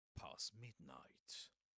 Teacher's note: Usually in this case you wouldn't pronounce the t at the end of past because right after it comes a m consonant, right? And before that there's another consonant, the s consonant.